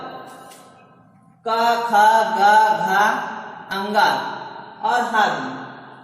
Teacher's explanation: क वर्ग, क, ख, ग, घ, अंगा और हा भी, ये सब कंठ द्वारा बोले जाने वाले वर्ण हैं। ऐसे वर्ण जिनके उच्चारण करते समय हम कंठ का प्रयोग करते हैं वह कंठ कहलाते हैं।